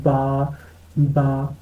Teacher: دیکھیں اندر سے جڑتے ہیں ہونٹ، تو بند ہونٹوں کے گیلے حصے سے با ہوتا ہے۔